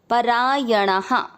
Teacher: य में अमिक्स किया परायणा। णा में आ की मात्रा तो विसर्ग को पढ़ेंगे हा